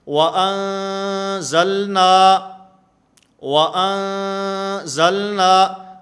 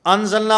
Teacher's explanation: آواز ناک کے اندر لے جا کر غنہ کے ساتھ ہم اس کو ادا کریں گے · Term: اخفاء